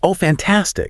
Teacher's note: Yeah, my pitch goes up, my eyes probably widen, my pacing is quick, and I'm physically leaning into the conversation.